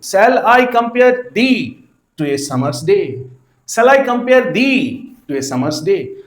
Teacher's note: iambic यानी कि वो मीटर जिस मीटर का है सिलेबल क्या है अनस्ट्रेस फॉलोड बाय स्ट्रेस. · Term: iambic pentameter